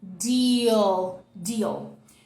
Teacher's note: A gente vai fazer o I de ilha, do português mesmo, só que exagerado. E a gente vai marcar esse L no final. Então, quer a sua língua bem encostadinha aqui, ó.